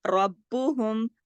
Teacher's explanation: ایک تو را کو موٹا پڑھیں گے ربہم، اور دوسرا یہاں پہ سختی سے با کے ساتھ جوڑیں گے کیونکہ یہاں تشدید ہے، 2 با ہیں، اور رب بو دونوں پڑھے گا نا، را با زبر رب، با پیش بو، رب دونوں اس طریقے سے جب آپ سختی سے جوڑیں گی تو دونوں حروف پڑھے جائیں گے، تو نقصان حرف نہیں ہوگا۔